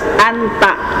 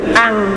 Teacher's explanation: Ketika dia dibaca samar nunnya, maka lidahnya itu tidak nempel, nunnya itu tidak nempel, lidahnya itu tidak nempel ke gusinya, ya, jadi lepas, jadi tidak an tapi al.